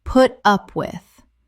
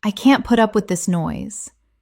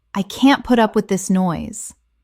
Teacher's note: The stress is usually on the up.